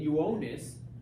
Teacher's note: because it goes it's the start of the word and it goes I then a vowel it gets treated like a j